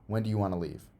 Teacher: there's no pause between want and to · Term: close